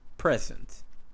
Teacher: in the noun present the first syllable is the tone syllable